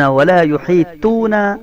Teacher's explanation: خلفہم ہا، ولا ولا یحیطون، ولا یحیطون، تا تا طا، یہ طا ہے، ٹھیک ہے. موٹے طا کے ساتھ آپ نے اس کو ادا کرنے کی کوشش کرنی ہے